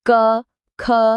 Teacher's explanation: ગળામાં અંદરથી અવાજ આવતો લાગશે, ખરું ને? એ છે કંઠ્ય.